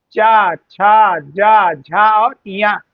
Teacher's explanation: इसका उच्चारण स्थान जो है तालु है